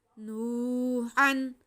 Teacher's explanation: ये देखें हमारे पास है वाव साकिन से पहले पेश, तो वाव मद्दा है, इसको हम खींच के पढ़ेंगे। उसके बाद हा पे हमारे पास दो ज़बर हैं यानी कि तनवीन है, उसके बाद हा हल्की है तो इस पे इजहार होगा, तनवीन को वाज़े करके पढ़ेंगे।